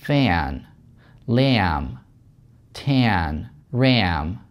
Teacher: Звук поднимается, опять происходит California vowel shift. То есть у нас звуки либо вниз двигаются, либо наверх двигаются.